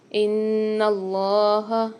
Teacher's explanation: نون کے اوپر مشدد آ رہی ہے تو اس کو ہم غنہ کر کے پڑھیں گے، اللہ کے لام کو ہمیشہ موٹا پڑھتے ہیں۔